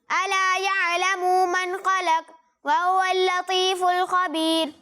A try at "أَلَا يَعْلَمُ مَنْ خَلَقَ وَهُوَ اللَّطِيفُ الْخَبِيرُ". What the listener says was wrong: اچھی کوشش ہے، لیکن یہاں میم پر پیش ہے، ٹھیک ہے، اسے آپ نے کھینچا ہے، اسے کھینچنا نہیں ہے، الا یعلم نہیں پڑھنا، الا یعلم، ٹھیک ہے. اور دوسری بات یہ کہ قاف میں آپ نے کلکلہ نہیں کیا، یہاں پر کلکلہ کرنا ہے.